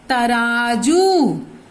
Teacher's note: जू, ज के ऊपर दीर्घ, जिसमें हम थोड़ा ज्यादा ओठ को गोल करेंगे, उस पर लगेगा दीर्घ।